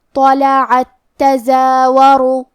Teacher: کلمت طلعت میں تو حروف تفخیم میں سے ہے تو ہم یہ حرف کو بھاری آواز میں اور منہ پھلا کے پڑھیں گے · کلمت تزاورو، یہاں حکم ہے ادغام، ہم پہلے تا کو دوسرے تا میں ملا کے ایک ہی تا اور تشدید کے ساتھ پڑھیں گے